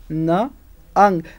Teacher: tongue and teeth come in contact and they block the oral tract oral tract is completely blocked but air passes through the nose · passes through the nose nasal cavity and sound is heard um the back part of the tongue touches to the soft palate and blocks the oral passage that that connection blocks the oral Passage but air releases through